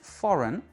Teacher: C'est la première syllabe qui est accentuée et la deuxième est réduite.